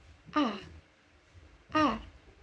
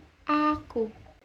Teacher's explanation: vokal ini dibentuk dengan bagian tengah lidah agak merata dan mulut pun terbuka lebar. Jadi, a contohnya aku. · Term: fonem A